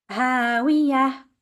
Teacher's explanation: And as you know, ta marbuta, which is supposed to be a te sound, we are stopping on that word because it's end of the verse, verse number 9. We have to change the ta marbuta into a ha.